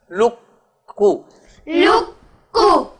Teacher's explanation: لکو ہاں کاف کے تشدید ہے نا اس لیے، ورنہ پہلا جو ہے وہ نہیں پڑھا جا، قاف نہیں پڑھا جا رہا، کاف پڑھا جا رہا ہے لام کو، تو کاف پہ تشدید کی وجہ سے آواز ٹکے گی اور پھر اس کا پیش پڑھا جائے گا